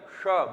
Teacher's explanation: ये आपके मूर्धा से हवा निकाली है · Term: मूर्धन्य शकार